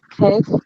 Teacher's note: the lingual velar stop or the lingual velar plosive